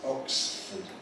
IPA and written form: ˈɒksfəd (Oxford)